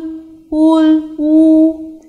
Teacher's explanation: pronouncing oo the opening of the mou mouth is the minimum the lips are rounded to the maximum extent and the tongue remains high and towards the back